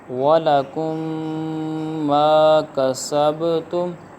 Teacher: اب یہاں پر گنہ کیا کیونکہ میم ساکن کے بعد دوسری میم آ رہی ہے